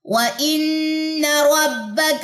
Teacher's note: نون مشدد کا غنہ ناک سے ادا ہوگا